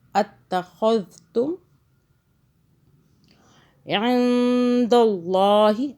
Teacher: اللہ موٹا پڑا کیونکہ اللہ سے پہلے زبر آ رہا ہے، اور یہ نون جو ہے یہاں اخفا بن رہا ہے، اخفا کا قاعدہ آ رہا ہے۔